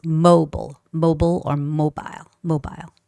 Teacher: in both cases again the stress is kept to be put on the first syllable